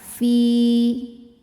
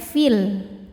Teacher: Ya sukun didahului harokat kasrah, maka panjangkan 2 harokat. Fi. Namun jika diteruskan maka jadi pendek fil. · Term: mad tabi'i